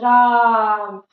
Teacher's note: रा यहाँ खिंचा रहा है और इसमें टाइम ज्यादा लग रहा है। इसमें ह्रस्व स्वर से प्लुत स्वर में 3 गुना समय लगता है उसको बोलने में।